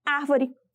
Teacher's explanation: a sílaba tônica de árvore é a sílaba a e a antepenúltima sílaba da palavra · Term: proparoxítona